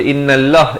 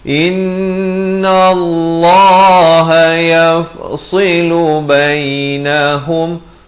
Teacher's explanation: Nallah, lafz jalalah jadi tebal